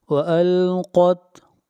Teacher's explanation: قاف حروف مستعلیہ میں سے ہے، موٹا پڑھیں گے